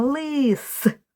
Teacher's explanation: У слові лис теж три звука, але ми маємо два твердих приголосних л і с.